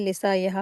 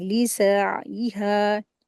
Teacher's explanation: सीन के साथ ऐन का मखरज भी अदा करना है।